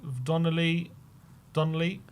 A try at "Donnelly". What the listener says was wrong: Donnelly. Oh, you say Donnelly. You keep adding an A in there for Donnelly.